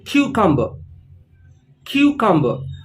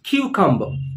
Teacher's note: the stress is on the first part of the word cucumber